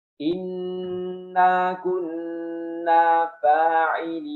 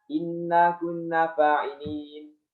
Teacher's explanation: ketika wasol, itu dibaca gunah yang sangat sempurna, panjang